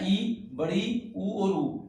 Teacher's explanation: उच्चारण करने पर मुख का सबसे कम खुलना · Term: संवृत